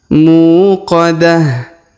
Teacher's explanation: huruf mu kita panjangkan dua harakat karena di depannya terdapat wau sukun muqadah kemudian ta marbutah yang di ujung kita rubah menjadi ha